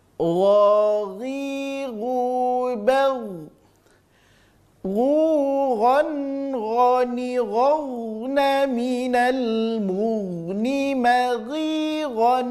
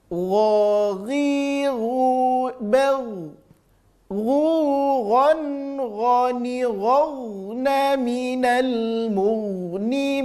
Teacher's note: Huruf gha sama rasa, ya. Terasa di ujung tenggorokan keluarnya, tapi lebih lembut saja bunyinya daripada huruf kha.